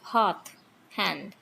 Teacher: this h is fricative, voiceless, unaspirated